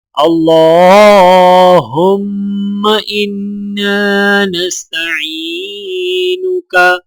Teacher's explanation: اللہ کے لام کو موٹا پڑھا جائے گا اور لام کے اوپر کھڑا زبر ہونے کی وجہ سے ایک الف کے برابر کھینچ کر پڑھا جائے گا۔ میم اور نون مشدد ہے تو لہٰذا غنہ کیا جائے گا۔